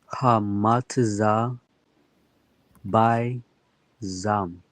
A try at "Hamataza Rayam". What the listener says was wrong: Hamataza, and then this third letter here, this is a Ra. That it would be a Ya. So Hamataza Rayam. Hamataza Rayam.